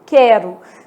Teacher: Quando eu pego a palavra quero e faço a transcrição fonética dela, né? O U some, ó, quero. São 5 letras e 4 fonemas, né? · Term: U nula